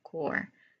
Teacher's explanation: sound made with a tip of your tongue curled slightly back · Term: clear sound r